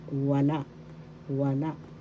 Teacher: Second syllable la. The second syllable has the accent.